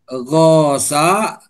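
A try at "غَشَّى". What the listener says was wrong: Ulangi Pak, wazan 3 bertasdid.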